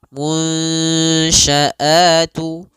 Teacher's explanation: caranya adalah kita samarkan nunnya kepada huruf shin. Munsya'atu. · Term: ikhfa